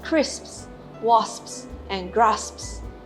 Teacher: it's the lips that cut off the airflow for the p sound. The tongue stays in place for the s sounds, and the lips close for the p sound, cutting off the airflow. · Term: sps clusters